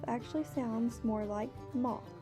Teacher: allowing the diphthong in the word mouth to be changed to the open O in moth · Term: vowel shift